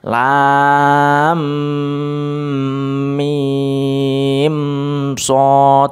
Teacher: mim yang bertemu dengan shad itu tidak boleh berdengung karena itu bacaan idhar syafawi